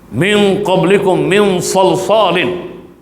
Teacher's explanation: nun mati ataupun tanwin bertemu dengan huruf ikhfa yang bersifat isti'lah, maka gunnahnya gunnah yang kemah, yang tebal.